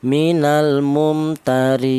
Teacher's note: Namanya qasar yaitu pendek ya panjangnya itu satu alif atau dua harakat atau dua ketukan